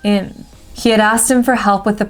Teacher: And just like we did with her, where we dropped the H sound, for the word him, it changes to im. And we again drop the H sound.